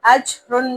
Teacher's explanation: یہاں پر بھی تنوین پر غنہ نہیں کریں گے کیونکہ اس کے بعد حروف ہلکی غین آ رہا ہے